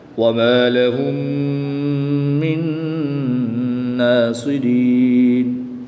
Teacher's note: میم ساکن کے بعد دوسری میم ہے تو یہاں پر ادغام شفوی ہوگا، یہاں پر بھی غنہ کریں گے۔ نون ساکن کے بعد نون حروف معلوم میں سے ہے تو یہاں پر بھی ادغام مع الغنہ ہوگا، تو یہاں پر بھی غنہ کر کے پڑھیں گے۔